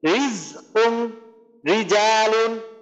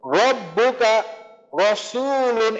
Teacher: পাতলার ক্ষেত্রে আমার মুখটা একটু প্রসারিত হবে, আর মোটার ক্ষেত্রে আমাদের মুখটা কিন্তু সংকুচিত মতো থাকবে